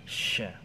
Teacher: Shi, makhrajnya, tempat keluarnya di maaf, di lidah bagian tengah menempel dengan langit-langit bagian atas